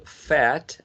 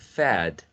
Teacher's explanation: In this case, the final sound is different. T would be a voiceless sound, and D would be a voiced sound.